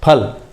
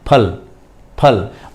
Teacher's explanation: ये फल है, फल न बोलें इसको, फल। दोनों होठ मिला के आपको हटाने हैं